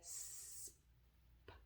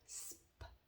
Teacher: You can hear, and you can also see my lips say sp. You can see the shape of my lips when it changes to the P, but they flow together.